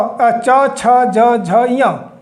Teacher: च जो है ये जीभ जो है वो तालू को टच करती है तभी इसकी आवाज निकल पाती है तो इसे ताल व्यंजन कहते हैं ट ठ ड ड ण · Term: तालव्य के व्यंजन